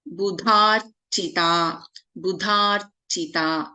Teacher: Dha is a Mahaprana.